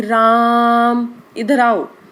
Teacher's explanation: अब मुझे किसी को लंबी आवाज़ देके किसी को तेज़ आवाज़ में बुलाना है तो मैं उनको कहूँगी राम, इधर आओ। तो वो जो राम है जो मैंने लंबे स्वर में बोला वो प्लुत स्वर के अंतर्गत आएगा